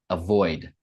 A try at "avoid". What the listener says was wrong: Yeah, there's kind of a hard D at the end. Avoid.